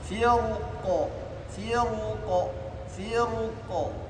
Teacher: yang pertama membaca tafhim ketika waqaf